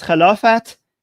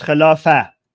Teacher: in Persian, when you say these words, you pronounce the t sound at the end, but in Arabic, they just pronounce it like with eh. So English is caliphate, Persian is Khilafat, Arabic is Khilafah.